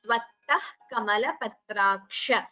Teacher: So jihva muliya, visarga followed by ka. You pronounce it as tvattah kamalapatraksha.